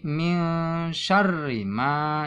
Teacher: Nun mati bertemu shin ya. Shin ini salah satu daripada huruf ikhfa, maka nun ini harus dibaca samar ya.